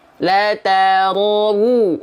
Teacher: Illa bidhammi syafataini dhammah, kecuali dengan betul-betul memonyongkan bibir. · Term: harokat dhammah